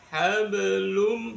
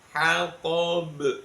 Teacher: dibaca mantul tapi pantulannya sugro kecil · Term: qolqala sugro